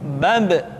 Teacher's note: Ketika mati, maka terdengar suara pantulan.